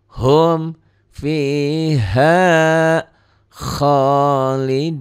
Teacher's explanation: Dihentikan jadi duduknya jadi lebih panjang ya. Khaliduna cuman 1 alif kan, 2 ketukan. Tapi dihentikan dunya jadi panjang.